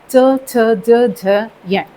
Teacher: तालव्य जहाँ पर तालु से उच्चारण होता है, जैसे च वर्ग है हमारा, च छ ज झ य, तालु से उच्चारण होता है